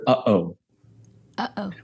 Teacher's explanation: When we say uh-oh, there is not an aspiration of ha-ho, right? Right. The vocal folds come together. Like if you think about the word uh-oh and you're about to speak it, in very slow-mo, what happens is your vocal folds close together and then air moves, and that's what separates and starts a vibration of the folds. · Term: coup de la glotte